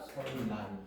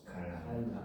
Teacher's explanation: 비음 니은은 유음 리을 앞 또는 뒤에서 리을로 바뀌어 발음이 됩니다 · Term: 유음화